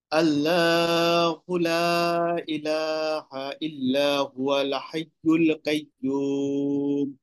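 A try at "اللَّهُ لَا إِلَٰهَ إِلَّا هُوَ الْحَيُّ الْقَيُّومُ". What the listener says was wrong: আল্লাহু হবে, আর কাইয়ুম না, এটা কয়ুম হবে, আর বাকি সব সুন্দর আছে।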